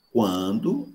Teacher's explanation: Mas quando eu digo quando é o K, mas eu tive necessidade de arredondar os lábios. Por isso que eu simbolizo o K com Wzinho em cima. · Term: labializado